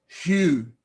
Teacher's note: Notice the diphthong, u, u. But notice the hard breathing. So it becomes hu.